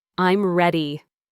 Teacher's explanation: your voice should go down at the end, showing it's finished, a clear declaration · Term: falling voice